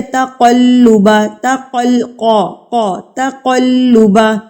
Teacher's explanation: نقطوں والا قاف جو ہے ہمیشہ پر کر کے پڑھا جاتا ہے، یعنی کہ ہیوی کر کے پڑھا جاتا ہے۔ ہونٹوں کو بالکل آپ گول کریں گے تب یہ ادا ہوگا پر کر کے، ٹھیک ہے۔